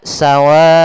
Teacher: maka kita panjangkan dulu w-nya sepanjang empat harakat baru dibaca onnya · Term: mad wajib muttasil